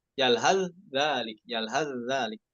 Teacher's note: ketika kita dites sama guru kita bagaimana cara wasalnya pada kata yalhas dan dzalik, ya sudah diidghamkan, idghamnya bukan nakis namun kamil.